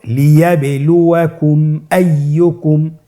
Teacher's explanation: মিম সাকিনের পরে যদি মিম এবং বা ছাড়া বাকি যতগুলো হরফ আছে আরবি সবগুলো হরফের যে কোনো একটি হরফ আসলে মিম সাকিনকে গুণনা ছাড়া স্পষ্ট করে পড়তে হবে। মিম সাকিনকে স্পষ্ট করে গুণনা ছাড়া পড়তে হবে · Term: ইজহারে শাফাউই